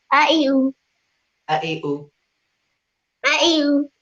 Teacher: জবরের সময় দুই টুট খোলা রাখবো, জেরের সময় টুট একটু নিচের দিকে নামাইমু, আর পেশের সময় টুট গুলো করে দিব